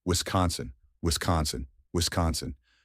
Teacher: with the emphasis on the second syllable con